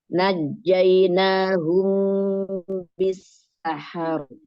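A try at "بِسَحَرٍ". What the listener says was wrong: Bisahar. Nggak ada tasdid ya. Najainahum bisahar.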